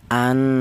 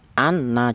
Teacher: gunah itu dua ketukan atau dua harakat